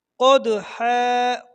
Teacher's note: قوف کو موٹا پڑھنا ہے اور دال پر قلقلہ کرنا ہے